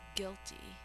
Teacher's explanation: two syllables the first syllable is accented